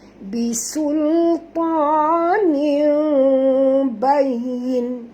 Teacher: Tanda tanwin kepada bunyi mim, kerana bila huruf nun dengan ba ni bertemu, kita kena tutup mulut kita ya. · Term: iqlab